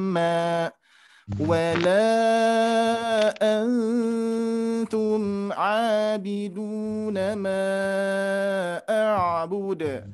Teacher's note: Dengan 3 ketukan dengan kalimat ditahan lama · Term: dengungan